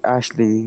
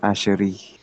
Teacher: wala silang L, nagiging R sa kanila